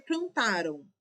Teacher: Este M dá um som nasal pro O, pro a. E ele no final vai ter um som de o com U. Vai ter um som de semival e não um som de consoante mã. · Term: semivogal